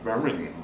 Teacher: it almost ran all into one extended syllable